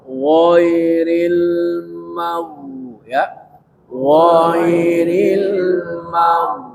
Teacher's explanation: Jadi salah satu sifat huruf ghain ya, itu kan harus tafkhim. Tafkhim itu bunyi mirip o tapi bukan o ya. Jadi o seperti o, kemudian o, wo, ditafkhim.